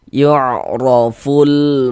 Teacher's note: Maka huruf ro dibaca tabkhim. Dibaca tebal, sehingga dengan menaikkan pangkal lidah kita.